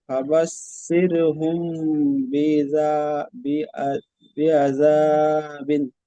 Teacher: মিম সাকিনের পরে বা এসেছে, তাই মিম সাকিনকে এক আলিফ পরিমাণ গুণনা সহ পড়তে হয়। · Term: ইকফায়ে সাফাবি